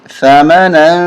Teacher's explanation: یہاں اخفا ہوگا، ناک میں آواز چھپائیں گے، یہ ثمنا اس طرح پڑھیں گے